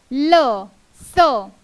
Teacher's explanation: ल स यांचा उच्चार जेव्हा आपण करतो तेव्हा दातांचे साहाय्याने त्यांचा उच्चार होत असतो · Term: दंत्य वर्ण